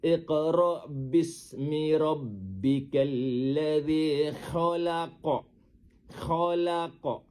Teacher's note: Dengar huruf qo tu kita baca dengan pantulan yang besar. Kerana ketika itu berlaku qalqalah kubra.